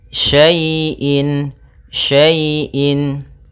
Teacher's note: Pada bacaan wa kulla syai'in, syai' di sini ada fathah bertemu dengan ya sukun. Maka apabila ada huruf ya sukun didahului dengan harakat fathah, ini kita namakan dengan bacaan lin, yang mana ya dalam membacanya lembut